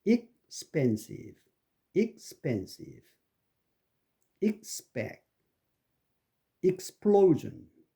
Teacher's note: expensive에는 그 펜에 엑센트가 있고 ex에는 엑센트가 없죠